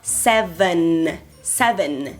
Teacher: E tem esse N final do inglês que fecha a sílaba, ancora, né? Que é a língua encostando no dente.